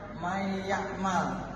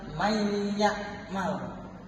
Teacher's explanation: Jadi nun sukunnya itu tidak dibaca, tetapi dibacanya huruf selanjutnya, memasukkan huruf selanjutnya. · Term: idgham